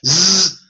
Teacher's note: Z is part tonal, part noise.